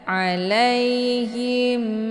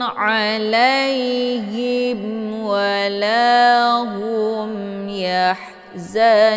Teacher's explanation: mim sukun ketemu huruf wau dinamakan dengan izhar syafawi cara bacanya mimnya dibunyikan secara jelas atau jelas bunyi m-nya cukup ditekan saja tidak perlu ditahan jangan sampai terbunyi bacaan tahan hukum bacaan izhar syafawi dibacanya jelas